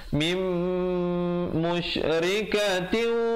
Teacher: Mim, idgham bi gunnah sekali lagi, nun mati bertemu mim. Asalnya min musyrikatin, tapi di situ kena baca mim musyrikatin. Di situ sekali lagi idgham bi gunnah.